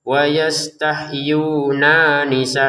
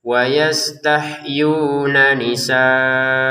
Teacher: Nun yang pertama langsung bertemu nun yang kedua ya. Jadi jangan dipisah atau dipotong.